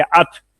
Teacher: जब आवाज खत्म होगी ना तो फौरन नहीं सांस टूटेगा, थोड़ी देर के लिए सांस जारी रहेगा. अगर फौरन तोड़ दें तो हा की आवाज पैदा हो जाती है, अथ. इससे बचने के लिए हमस इसमें सांस को जारी रखना होगा.